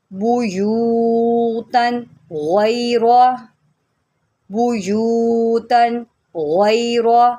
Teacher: غین بھی موٹا ہوگی اور را کو بھی ہم موٹا کر کے پڑھیں گے۔